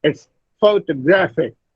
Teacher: Now, it is not photographic, it's photographic. Gra, the third syllable, receives primary stress, and the first syllable, pho, receives the secondary stress.